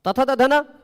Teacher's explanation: पांचों का उच्चारण स्थान दंत, पांचों का आभ्यंतर प्रयत्न स्पृष्ट